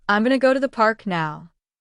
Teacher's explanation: And when a native speaker talks very fast, it might sound like, "I'm going to go to the park now." Did you notice that? Going to often becomes gonna in natural speech. This is called connected speech.